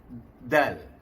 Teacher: Hujung lidah, pangkal gigi atas. Mengenai sebahagian gigi dan gusi. Ya. Jadi bunyi du, bukan du.